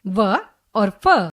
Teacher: जो वर्ण दांत और ओष्ठ दोनों की सहायता से बोले जाते हैं वे दंतोष्ठीय वर्ण कहलाते हैं।